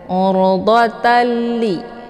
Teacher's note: tanwinnya dimasukkan ataupun dileburkan ke dalam huruf la dengan cara tiada berdengung. Urdatali, jadi cukup ditekan saja, tidak perlu ditahan. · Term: idgham bila gunnah